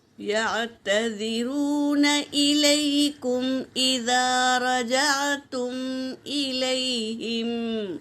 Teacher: واو ساکن سے پہلے پیش واو مدہ، تو اسے ایک الف کی مقدار کھینچیں گے۔ یا ساکن سے پہلے زبر یائلین ہے، اسے جل پڑھیں گے۔